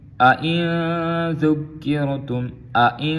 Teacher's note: دونوں حمزے جو ہیں تسہیل کے ساتھ پڑھیں گے